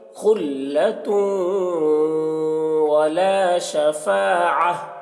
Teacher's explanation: تنوین کو واو سے ملا کر غنہ کے ساتھ پڑھیں گے، اور اس کو ادغام ناقص اس کو بھی کہتے ہیں۔